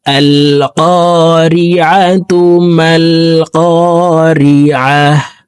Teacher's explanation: যদি আমরা মিলিয়ে পড়ি তাহলে গোলতাকে তার উচ্চারণ করে পড়বো